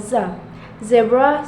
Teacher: Voiced alveolar fricative sound